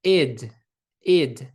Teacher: Esse ID seria um som mais nasalizado desse I.